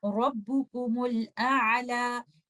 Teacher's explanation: If you're choosing to continue after letter meme, you will join meme with letter lam and you will recite it Rabbukumul A'la, and you will not pronounce and you don't have to worry about the vowel of Hamzatul Wasl.